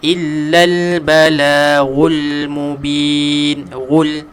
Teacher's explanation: Jangan ada getaran pada lidah kita. Kalau ada getaran dia akan jadi ra lah. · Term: huruf ghain